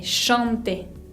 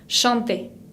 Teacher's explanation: Ven que acá tenemos una nasal, A con N, chanter. Bien, tienen que sentir que el aire sale por la nariz.